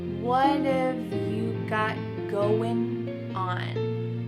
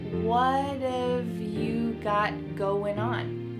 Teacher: So what and have are going to be pushed together.